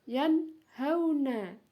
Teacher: nun mati bertemu dengan huruf ha. Jadi jelas, ya, baca nunnya dibaca jelas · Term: izhar